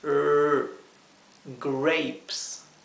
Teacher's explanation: la r inglesa que se pronuncia con la lengua dada vuelta hacia atrás del paladar